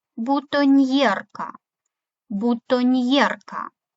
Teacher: після N перед є м'який знак N буква передає звук нь і буква є передається двома звуками йе